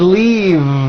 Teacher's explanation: I should have said leave with a voiced V sound.